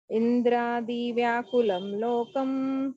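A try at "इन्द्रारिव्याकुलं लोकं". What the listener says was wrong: Not Adi. Indrari. Ra.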